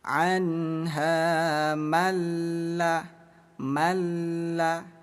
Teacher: Idgham artinya memasukkan, bila gunnah artinya tanpa dengung. Jadi cara bacanya bunyi nun kita buang, bunyi nun kita abaikan, langsung baca lam yang bertasydid. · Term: idgham bila gunnah